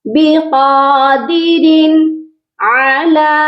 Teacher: لام کے اوپر مد بھی ہے اور کھڑی زبر بھی ہے، اس کو بھی ہم نے لمبا کر کے پڑھنا ہے